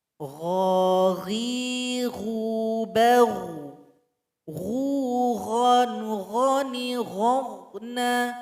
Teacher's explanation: Kemudian huruf ghain ini juga punya sifat isti'la, adanya suara yang naik ke langit-langit.